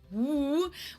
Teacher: the English W sound, the woo, where you really don't even touch anything with your lips or teeth